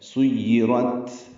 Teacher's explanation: سُيِّرَت، سین کو یا سے ملانا ہے، یا مشدد ہے، را پورا اور تا ساکن پہ ہمس ہے